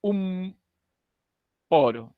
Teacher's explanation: Se juntaron los labios en esta expresión la n a la altura de la n se juntan los labios si mencionas esto un poro se ha juntado los labios un